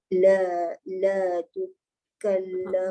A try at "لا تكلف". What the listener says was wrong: Bonda kena ulang. La tukallafu. Tadi sebut lifu.